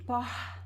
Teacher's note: more aspirated, like it has the R passing through in your mouth, and it is similar to the sound of the H in English